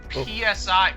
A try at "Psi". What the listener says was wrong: I think that P is silent.